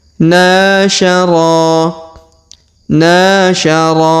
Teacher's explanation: huruf na kita panjangkan dua harakat karena di depannya terdapat Alif